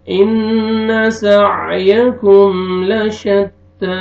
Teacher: نون مشدد غنہ کریں گے